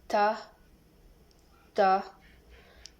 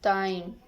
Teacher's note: Characteristic alveolars stop and voiceless.